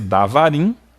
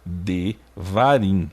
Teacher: Veja que a regra da fonética causa essa redução na vogal e a mudança desse som de kamatsu, de vogal A longa, para shivá, uma vogal reduzida a uma semivogal E